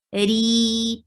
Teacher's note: Ri, 2 counts long, and this ra is light. Why? Because it has kasra. Whenever you find kasra on ra, it will be light.